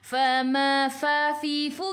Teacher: gigi atas menyentuh perut bibir bawah. Ma 2 harakat ada alif mad asli.